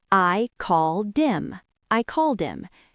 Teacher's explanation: Now remember from episode 6 in fast speech, we often drop the H in him. · So him just sounds like im. We take the D from called and push it on to the I.